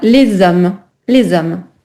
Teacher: En effet, moi j'ai entendu une liaison et c'est parfait.